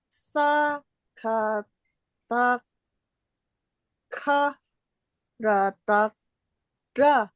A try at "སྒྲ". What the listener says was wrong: So here you miss sa kata g.